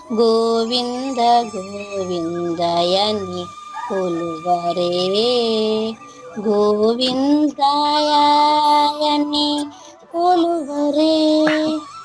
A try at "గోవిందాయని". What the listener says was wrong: అమ్మా యాక్ కాదమ్మా దీర్ఘం, గోవింద దాకి రావాలి, యాక్ కాదు. గోవిందాయని యా హ్రస్వాక్షరమే, దీర్ఘం రాకూడదు.